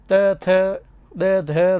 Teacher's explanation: त थ द ध रो उच्चारण करती टाइम जीव दांता ने स्पर्श करे तो दंत्य